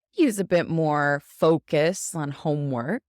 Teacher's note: The most important words on this are focus and homework.